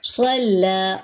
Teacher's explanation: صلی, صاد پر ہے, لام باریک ہے, لام کے اوپر کھڑا زبر ہے, ایک الف کے برابر لمبا کریں گے